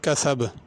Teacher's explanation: کسب آخر میں با ہے، اس پہ قلقلہ ہے، یعنی اس کو ذرا تھوڑا سا جنبش دے کے پڑھنا ہے